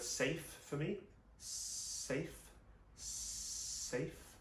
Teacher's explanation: We're looking for quite a dry S, not a S. And that's done by moving the tip of the tongue up slightly.